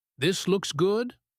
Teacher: we use something called rising intonation to make a sentence sound like a question, even if it is not a question grammatically.